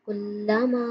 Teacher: میم مشدد پہ غنہ کریں گے